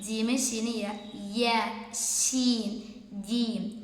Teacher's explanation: ഈ മൂന്ന് അക്ഷരങ്ങൾ വരുമ്പോൾ നാവിന്റെ മധ്യഭാഗം എന്താണ് മേലെ അണ്ണാക്കിലേക്ക് തട്ടിയിട്ടാണ് പറയേണ്ടത്